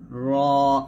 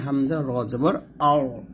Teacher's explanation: জিহ্বার আগার উল্টা পিঠ তার বরাবর উপরের তালুর সঙ্গে লাগবে আর র টা মোটো হবে